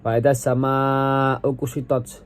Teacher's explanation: ada idgham syamsiah karena lam diidghamkan ke huruf sin, dan ada mad jaiz munfasil pada huruf as-sama karena huruf mad bertemu hamzah dalam dua kata dengan panjang 2 sampai 5 harokat.